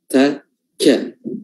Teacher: ketika kita melafazkan ta dan ka itu tidak keluar hams, namun kita usahakan untuk mengeluarkannya.